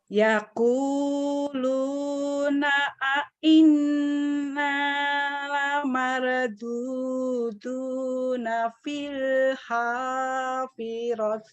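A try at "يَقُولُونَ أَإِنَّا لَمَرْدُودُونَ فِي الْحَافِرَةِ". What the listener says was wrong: Hafirah. Filnya alif lam qamariyah. Alif lam qamariyah itu idhar qamari. Jadi nggak boleh ditahan. Tinggal cepetin aja.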